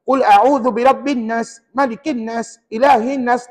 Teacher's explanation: dengung tadi ada bunyi sengau sikit tapi tak cukup 2 second · bacaan saya dengung tapi tidak cukup dua harakat